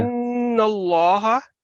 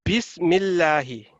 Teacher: اگر فتح ہے یا دمہ ہے تو اللہ کا لفظ ہمیشہ لام جلالہ اس کو کہتے ہیں، آپ نے موٹی آواز میں پڑھنا ہے